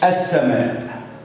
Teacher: اللام هنا كتبت اهي ولكن لا تنطق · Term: لام شمسيه